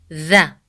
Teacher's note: when you say the sound of the, you put the tip of the tongue between your teeth.